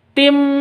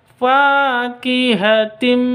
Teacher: Hukumnya jika ada nun sukun atau tanwin bertemu dengan yang 4 tadi, yang huruf idgham bi gunnah, ya, nun, mim, wawu. Bacanya dibaca dengung dengan dimasukkan langsung ke huruf idgham bi gunnahnya. Kalau non langsung masuk ke non, kalau mim langsung masuk ke mim, kalau wawu ataupun mim maka harus dimasukkan langsung ke hurufnya.